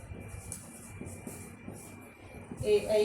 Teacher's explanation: ए, ऐ का उच्चारण स्थान कंठ तालु।